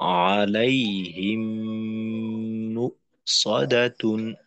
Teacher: দ্বিতীয় মিমে তাসদিদ দিয়ে গুণনা করতে হবে। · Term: মিম সাকিনের ইদগম